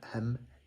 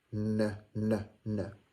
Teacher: you're closing your mouth with a hum, the M, and you are putting your tongue behind your teeth with a N